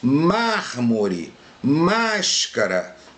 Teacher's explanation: Proparoxítonas. A sílaba tônica é a antepenúltima sílaba.